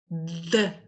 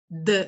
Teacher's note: Esse som D, né, ele é uma oclusiva vozeada, e por ele ser oclusivo, ele trava tudo